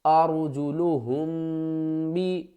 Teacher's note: میم ساکن کے بعد اگر با آ جائے تو میم کے اوپر ہم گنہ کر کے پڑھیں گے